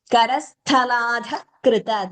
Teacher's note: महाप्राण करस्थलाधः कृत ध followed by visarga followed by ka so visarga followed by ka or kha we know it is jihva muliya